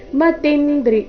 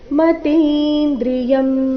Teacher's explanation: ಇಲ್ಲಿ ಮತಿಂದ್ರಿ ಆಗಬಾರದು ಮತೀಂದ್ರಿಯಂ ತಿ ದೀರ್ಘ ಬರಬೇಕು